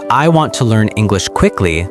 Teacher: For example, in the sentence, I want to learn English quickly, the stress falls on want, learn, English, and quickly. The other words are reduced and spoken faster. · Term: sentence stress